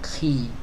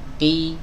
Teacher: ada yang membacanya dengan hams atau udara yang bocor. Qi. Ini salah.